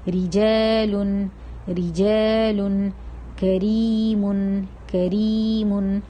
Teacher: پہلا قاعدہ ہے جب را پر زیر ہوگی، یعنی کہ را کے نیچے زیر ہوگی، تب ہم را کو باریک پڑھیں گے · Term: ترقیق